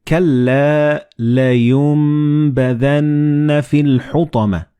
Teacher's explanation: Like in this example, you read كَلَّا لَيُنبَذَنَّ فِي الْحُطَمَةِ. So the noon and ba, they will be assimilated together and you will pronounce them as meme.